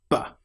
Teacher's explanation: The sound B is created with your lips fully together, not half together, not V, but B. And that sound is a clear B popping sound.